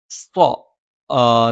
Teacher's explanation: നാവിന്റെ കൂർത്താറ്റത്തിന്െ മുകൾഭാഗം രണ്ടു വരി മുൻബല്ലുകൾക്കിടയിൽ പിന്നിലായിട്ടും നാവിന്റെ മധ്യഭാഗം മുകളിലേക്ക് ഉയർന്നു നിൽക്കുകയും ചെയ്യും